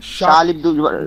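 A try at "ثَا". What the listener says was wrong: জেনা শা নয়, সা জিহ্বার ডগা সামনের দাঁতের আগা, সা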